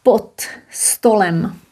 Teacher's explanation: Because of st, they're both voiceless, no problem. And d is influenced, goes to t